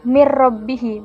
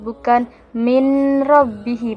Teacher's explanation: Nah, dalam Quran surat Al-Baqarah ini terdapat bacaan mir rabbihi, yaitu ro-nya dibaca jelas, yaitu di mana idgham itu meleburkan dua huruf menjadi satu huruf, yakni hukum nun mati dan ro itu dileburkan pada huruf ro, yaitu mir rabbihi, bukan min rabbihi, bukan, yaitu juga tanpa dengung. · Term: idgham bila gunnah